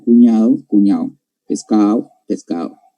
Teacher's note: La omisión de la D